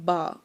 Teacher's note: एक तो है जी बा, जो कि हम होंठ को बंद करें एक दूसरे में तो फिर अदा होता है बा